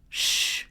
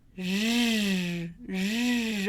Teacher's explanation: Zzz, sh, zzz, like television, right? I'm going to have sh and zzz made in the same place, in the same way, right? Friction right behind the bump